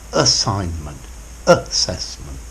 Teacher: Notice both of these start with a schwa sound